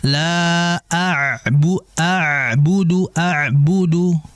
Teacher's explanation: Ain kita sudah bahas di pembahasan makhraj di mana ain ini masuk kategori huruf yang keluar dari tenggorokan bagian tengah ya. Sehingga dijelaskan terlebih dia memiliki sifat tawassut mengalir tapi enggak kayak sin.